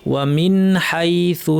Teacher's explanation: নুন সাকিনকে স্পষ্ট করে আমাদেরকে স্বাভাবিক গুন্না রেখে পড়তে হবে